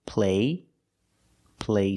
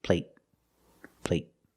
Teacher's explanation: the stop T at the end makes the long a a little shorter